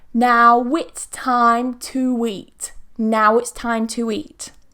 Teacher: So now, ow is a diphthong. Now it's with a w. Time to eat with a w.